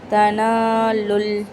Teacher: சேர்த்து ஓதும் போது தனாலுல் இப்படி தான் ஓதணும், லூன்னு வராது.